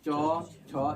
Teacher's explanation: यानी आपका जीभ जो है कहाँ सट रहा है? तालु में। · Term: तालव्य वर्ण